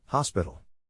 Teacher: To pronounce hospital, have in mind that the size of the syllable indicates where the accent or stress is. In this case, the accent is in the first syllable, corresponding to hos.